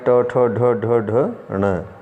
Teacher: फिर से देखें, री का टू से विपराय ट ठ ढ ढ ढ ण, रै का षटकोण वाले श का, इन वर्णों का उच्चारण स्थान क्या है, मूर्धा। जब हम इन वर्णों का उच्चारण करेंगे तो जो जिह्वा है वो मूर्धा से टकराती है।